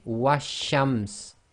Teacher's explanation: Now with a sun letter with a word before it, essentially here we've got the wow with the fatha, so wa again, and because it's a sun letter, the sheen has taken a shadda, so the shadda must be joined to a sound before it. So we're going to skip the lam completely · So we're going to skip the lam completely, and the giveaway here is there is no sukoon on the lam.